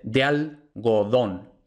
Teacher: la gue nuevamente no es oclusiva sino que es aproximante porque la gue solo permanece oclusiva justo detrás de pausa y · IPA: ðe̯al.ɣo.ˈðon